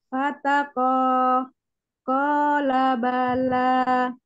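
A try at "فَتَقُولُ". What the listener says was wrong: Banyak pendek. Banyak yang ini jangan dibaca panjang. Fataqo.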